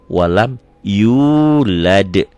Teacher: Tapi D ini karena termasuk huruf qalqalah, ini jadi D-nya double.